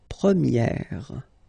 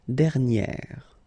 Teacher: So it's open, this eh sound.